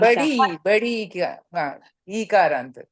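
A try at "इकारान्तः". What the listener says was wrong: You are saying Ikarant. You have to say Ikarantaha. You have to say the Visarga.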